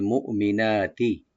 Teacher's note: হামজাটাকে right দিব কিন্তু কলকলা হবে না